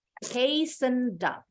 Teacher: Tadi bunyinya hasten. Tapi karena ada kata up di sebelahnya, kita sambung akhiran bunyi D-nya.